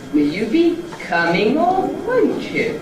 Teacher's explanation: it's a little rise starting on will, and then a new rise, starting at a different point on come, and then gradually going up to the nucleus.